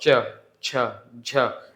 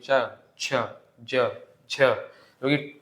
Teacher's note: इनको बोलने के लिए थोड़ी ज्यादा आवाज घिसते हुए निकलती है घिसते हुई लिखा है ना स्पर्श स्पर्श करेगी और संघर्ष भी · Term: स्पर्श संघर्षी व्यंजन